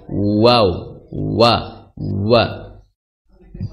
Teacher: huruf wau ini dia memiliki sifat rakhawah atau mengalirnya suara